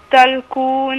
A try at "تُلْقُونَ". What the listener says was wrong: تاء عليها ضمة، مش تاء ، مش تاء عندك عليها ضمة؟ يبقى نقولها ايه؟ تو تلقون، ها